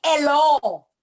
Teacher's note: All we do is we leave the H off and we just go right into the other vowels.